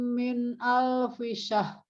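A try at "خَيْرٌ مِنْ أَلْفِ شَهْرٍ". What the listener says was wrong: R-nya nggak kedengeran. Syahr. Jadi jangan syah, tapi syahr. Kita harus bunyikan ya, karena berhentinya di ro, bukan di h. Ya, kalau ro-nya hilang berarti ngajinya nggak pas. Karena ada huruf yang hilang.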